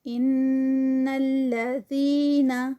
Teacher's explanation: ان پہ نون مشدد ہے تو یہاں پر غنہ ہوگا